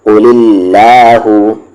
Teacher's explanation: لام جلالہ سے پہلے والے حرف پر زیر ہے تو یہ لام جلالہ لائٹ ہوگا